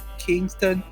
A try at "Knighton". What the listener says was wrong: Knighton, England. Knight. Not king, but knight.